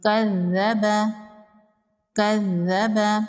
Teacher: یہاں پر تشدید ہے، ذال کو 2 بار پڑھیں گے اور ذال کو نرمی سے پڑھیں گے۔